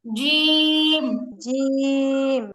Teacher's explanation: জিহ্বার মাঝখান উপর তালু বরাবর লাগবে।